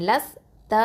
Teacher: லாம் வந்து ஹாபத்லிசான் எழுத்து நாவினுடைய ஓரப்பகுதி எழுத்து